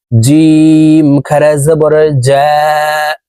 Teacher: জিম হরফের উচ্চারণ জিহ্বার মধ্যখান থেকে পড়তে হবে